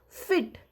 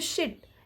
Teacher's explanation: इसमें ई का साउंड काफ़ी लंबा, मतलब ई का साउंड थोड़ा खिंचता है, या फिर शिट, इसमें ई का साउंड खिंच रहा है।